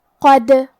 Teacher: ہم حرف الدال کو قلقلہ سے پڑھیں گے کیونکہ اس پہ جزم ہے ، اور قلقلہ کا معنی ہے حرف ساکن کو ہلانا، تو